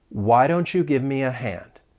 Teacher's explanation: Think about the phrase don't you. >> That T and Y. If they blend together, you get a ch. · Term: assimilation